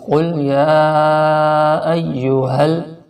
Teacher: یہ ہا حلق کے آخر سے نکالنا ہے۔ ایک ہا جو ہوتا ہے وہ ہا ہوتا ہے جو حلق کے شروع سے نکلتا ہے، اور یہ ہا حلق کے آخر سے۔